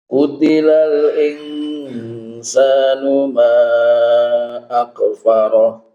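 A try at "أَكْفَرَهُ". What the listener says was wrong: Nah, huruf kaf jangan dikol-kolah. Akfaroh.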